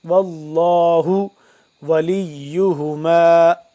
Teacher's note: ان تفشلا واللہ ولیہما، واللہ لفظ اللہ پر پڑھیں گے کیونکہ اس کو پہلے جو واو ہے، واو کے اوپر زبر ہے، زبر یا پیش آ جائے تو کیا ہوتا ہے، لفظ اللہ کو پر پڑھتے ہیں